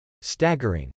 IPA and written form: stˈægɚ.ɪŋ (staggering)